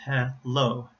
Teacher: And in this case, you hear a light L sound because it comes at the beginning of a syllable.